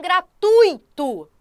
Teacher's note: quando eu tenho uma vogal na frente de uma semivogal o ditongo é o que decrescente do maior para o menor